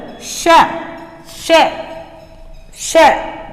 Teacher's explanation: देखिए, बोलकर श श श जब आपने उच्चारण किया तो जीभ का जो आपके आगे का भाग था, वो हमारे जो ऊपर वाले दांत है उसके थोड़ी आगे हमारा जो तालु है वहां स्पर्श करता है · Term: तालव्य ध्वनि